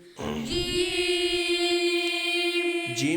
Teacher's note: जबान के दरमियान और तालू के दरमियान से अदा होता है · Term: हरूफ शजर